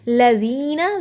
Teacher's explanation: ذی کو لمبا کیا کیونکہ جزم والی یا سے پہلے زیر حروف مدہ الف کے برابر لمبا ہوگا۔